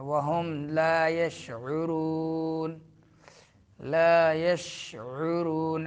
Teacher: عین درمیان حلق سے شین میں تفشی